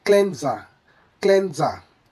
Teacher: The S naturally shifts to a Z sound in English, making it smoother to say cleanser.